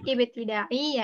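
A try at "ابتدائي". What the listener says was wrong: Bukan pakai ain Mbak. Bukan begitu. Pakai hamzah.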